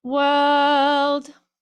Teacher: So we want to almost get rid of the R and just have a quick little LD at the end. So when I would sing it, it would be a little more British sounding, and it would be world, like part of your world.